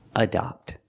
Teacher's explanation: And the word adopt has the short O. The sound is ah like stop and hot. It's an open sound.